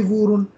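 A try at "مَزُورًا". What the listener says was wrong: मीम की आवाज नहीं आई बीच में. मीम की आवाज लाजमी आनी चाहिए.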